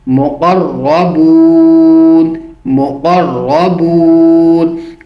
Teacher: را کو پر پڑھیں گے کیونکہ را کے اوپر زبر ہے اور را مشد ہونے کے ساتھ ساتھ بھی پچھلے حرف کے اوپر بھی جو را کے ساتھ مل رہا ہے وہ بھی زبر والا ہے.